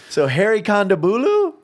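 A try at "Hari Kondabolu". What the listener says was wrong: No, it's not Bulu. It's Baloo.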